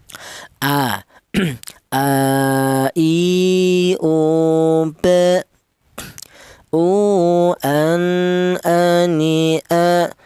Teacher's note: huruf hamzah keluarnya huruf berasal dari pangkal tenggorokan